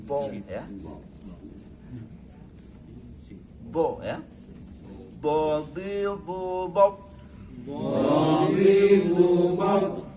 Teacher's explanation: karena dia hurufnya tebal, mulutnya agak membulat